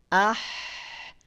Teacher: simpan sumber suara dari tengah tenggorokan dari wastul halqi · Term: hak kecil